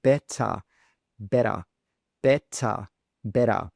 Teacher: It's just it's easier to pronounce the d sound instead of really saying that t